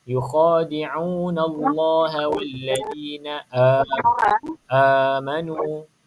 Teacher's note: Hamzah dia mesti keluar dekat bawah sikit.